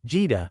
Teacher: spoken with a low tone, takes on a different meaning entirely